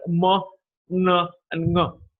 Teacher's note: the oral cavity is closed and the air is released through the nasal cavity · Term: nasals